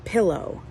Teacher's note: Or if you said pillow, it would go, the stress part is on pill, and then the unstressed is O.